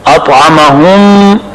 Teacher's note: طا مطبقہ اور مستعلیہ بھی ہے, موٹا پڑھا جائے گا